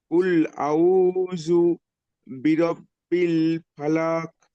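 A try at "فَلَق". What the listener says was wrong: ফালাক টানবেন না, ফালাক। জি, ফালাক, লাস্টে কফটা কলকলা হবে, ফালাক। লাস্টে কফটা কলকলা হবে, ফালাক।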